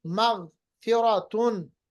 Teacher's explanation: مغ لوگ پڑھتے ہیں مغ، بہت غلط ہے، کیونکہ غین پہ قلقلہ نہیں ہوتا. ایسے پڑھیں گے مغفرتن.